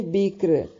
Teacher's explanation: وقف کی صورت میں را جو ہے باریک پڑھی جائے گی ، اور ملانے کی صورت میں را موٹی پڑھی جائے گی،